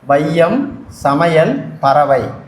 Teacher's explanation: ஐகார எழுத்தானது வையம், சமையல், பறவை என சொற்களில் முதல், இடை, கடை ஆகிய இடங்களில் வரும்பொழுது தனக்குரிய 2 மாத்திரை அளவிலிருந்து குறைந்து ஒலிக்கிறது. இவ்வாறு குறைந்து ஒலிக்கும் ஐகார குறுக்கம்.